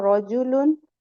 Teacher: اس کے بعد تھرڈ آپ کو جو ملا تھا لرن کرنے کے لیے رجولن، رو کو موٹا پڑھیں گے، زبر کے ساتھ ہے رجولن، رجولن مت پڑھیے گا، ٹھیک ہے.